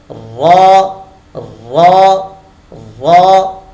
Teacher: نون کا جو مخرج ہے اس کے بالکل قریب قریب، لیکن تھوڑی سی زبان کی پشت جو ہے وہ بھی اس کے ادائیگی میں داخل ہو جاتی ہے